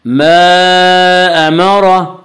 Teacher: امرہ کے را کو پر پڑھا جائے گا